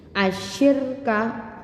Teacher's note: jadi Idgham Syamsiah itu nama sakitnya nama hukum tajwidnya cara membacanya alif lam tidak terbaca dan langsung dimasukkan ke dalam huruf selanjutnya